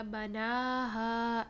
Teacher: نا اور ہا دونوں کو 2 کاؤنٹس کا ٹائم دیں گے، 2 سیکنڈ کا ٹائم ان کی مد کے بارے میں دیں گے۔